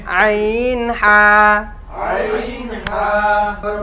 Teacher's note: দুই নাম্বার মাখরাজ দুই নাম্বার মাখরাজ হলকের মধ্যখান হইতে